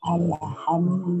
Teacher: ketika mengucapkan huruf dal yang berharokat dhamma, maka itmamnya adalah dengan ad-dhamm, memajukan dua bibir